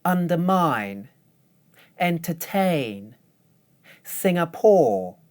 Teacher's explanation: Notice that in all of these words, the stressed syllable has a long vowel.